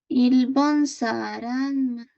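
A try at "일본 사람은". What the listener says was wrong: Ahí no le tengas miedo a ese sonido, es simplemente mun. Simplemente el sonido mun. Como con una U. Mun.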